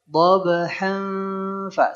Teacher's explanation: Ketika dhabhan, hannya ke huruf ikhfa. Dia ada samarnya, kemudian ada gunnanya.